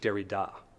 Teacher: It's, in a way, it's sort of an inverse of a dactyl, in that we have two unstressed syllables followed by a stressed one. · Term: anapest